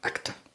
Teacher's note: la sílaba tónica de la palabra actor en español es la segunda y en inglés la primera